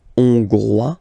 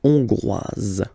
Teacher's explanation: final S not pronounced for the masculine form, and then you pronounce it here for the feminine form. Hongrois, hongroise.